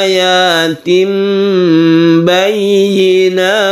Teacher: Ayatim bayyinat ini disebut bacaan iklab. Kita ganti tanwin ini menjadi mem.